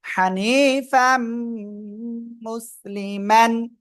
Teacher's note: ইদগামে বাগুনার অক্ষর ইয়া মিম নুন এই চারটার একটা অক্ষর দেখেন মিম আসছে গুন্নার সাথে মিলে পড়তে হবে